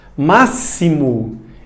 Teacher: Máximo, esse X teve o som de S. Na verdade, 2 S's, né?